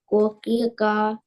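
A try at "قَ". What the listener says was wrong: Kuki qa. Qa. Bold it. This is qaf. The sound will be qa. When you read reverse, so kuki ka not qa.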